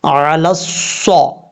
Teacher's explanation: لام کو صاد سے جب کنیکٹ کریں گے تو یا الف اور لام کو چھوڑ دیں گے